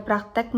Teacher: Kata praktek tersebut itu mengalami perubahan fonem vokal I menjadi fonem vokal E.